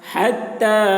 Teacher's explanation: ता में खड़ा ज़बर है और मद है तो खींचेंगे